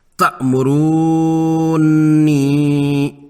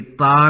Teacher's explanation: یہاں حمزہ ساکنہ ہے جسے جھٹکے سے پڑھنا ہوتا ہے۔ تا درست ہے، بغیر جھٹکے کے تا نہیں پڑھنا۔